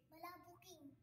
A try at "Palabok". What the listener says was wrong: Mali ka. Walang N sa Japan. Walang N sa Japan.